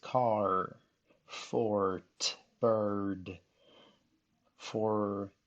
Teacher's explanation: the vowel is kind of changed by the R that follows that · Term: R-controlled syllable